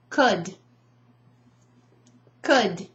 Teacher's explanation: That L is not produced, right? It's silent.